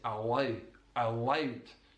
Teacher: it's coming from the back of the mouth with the tongue down rather than allow at the front of the mouth. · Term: dark L